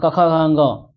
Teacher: कवर्ग बोला जाता है कंठ से